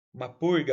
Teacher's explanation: para falar igual o R retroflexo do caipira paulista